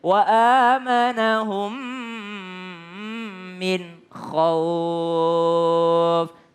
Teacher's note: kalau Nun ketemu dengan Kho tidak lagi berdengung tapi harus jelas huruf Konya wa amanahum Minho up tapi jangan